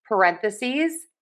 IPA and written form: pəˈrɛn.θə.siːz (Parentheses)